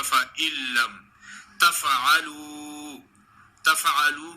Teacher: فَإِن لَمْ اصل میں تو ہے فَإِن لَمْ لیکن نون ساکن کا آگے یرملون میں ادغام ہو رہا ہے